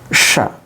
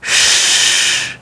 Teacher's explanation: the sound is sha with the help of schwa, and without the help of schwa, the sound is sh